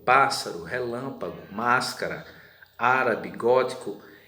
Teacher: as proparoxítonas são acentuadas e o que são mesmo as proparoxítonas aquelas que tem a sílaba tônica na antepenúltima